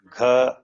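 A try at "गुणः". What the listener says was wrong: Gu. It is Gu. With the vowel sign, it is Gu. And Na. Murdanya, cerebral. Gunaha.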